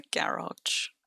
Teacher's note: Emphasis on the first on the first syllable.